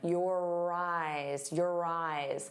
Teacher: And notice how your and eyes link together. You're going to hear that R sound on both sides of the word if we link them.